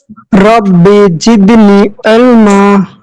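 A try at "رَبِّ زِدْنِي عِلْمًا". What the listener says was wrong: রব্বি জিদনি, একটু টান হবে। কি কারণে টান হবে সেটা আমরা পরে সামনে পড়বো ইনশাআল্লাহ। এখন একটু টান দেবো। রব্বি জিদনি ইলমা।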